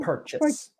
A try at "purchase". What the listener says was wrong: We would say purchase, but actually it's a shorter sound when native English speakers say it.